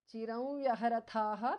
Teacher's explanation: Anuswara changes to the nasal of va.